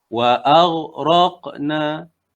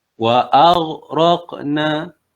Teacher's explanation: Kita dapat rasa pangkal lidah kita naik. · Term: isti'la